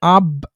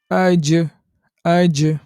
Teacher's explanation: একটি হরফের উপরে যদি সাকিন থাকে তখন আমরা এটা উচ্চারণ করার সময় একটা শক্তিপূর্ণ কম্পন সৃষ্টি করে পাঠ করি সেটাই হচ্ছে কলখোলা। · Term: কলকলা